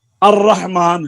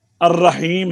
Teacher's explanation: لام ساکن کا را سے پہلے ادغام ہوتا ہے